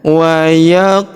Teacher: Perhatikan huruf qof berharakat sukun maka kita pantulkan atau kita qalqalahkan